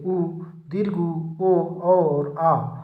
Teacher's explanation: ऐसे स्वर जिनके उच्चारण में होठों का आकार गोल हो जाता है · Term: वृत्ताकार स्वर